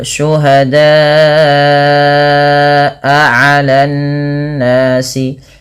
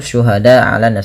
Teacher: panjangkan bunyi suara huruf da sepanjang empat atau lima harakat karena ia termasuk daripada bacaan mad wajib muttasil dan dia tidak boleh kurang.